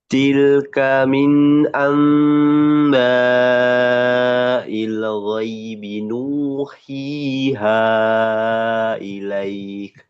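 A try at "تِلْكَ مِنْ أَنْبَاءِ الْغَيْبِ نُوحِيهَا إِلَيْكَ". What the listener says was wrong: Nah, lebih bagus ya.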